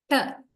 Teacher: This tip of the tongue rises and actually does not touch exactly the alveolar ridge. It goes somewhere after the alveolar ridge, right? After the alveolar ridge, somewhere here. · You can imagine, you can feel inside your mouth when you say t, and the tongue rises and it curls back and touches the area after the alveolar ridge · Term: t sound